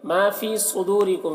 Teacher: فی کو بھی ایک الف کے برابر کھینچ کر پڑھیں گے، یا مدہ ہے.